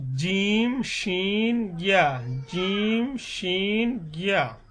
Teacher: 6 নম্বর বলা হয়েছে কি যে জিহ্বার মধ্যখান তার বরাবর উপর তালুর সঙ্গে লাগাই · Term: 6 নম্বর মাখরাজ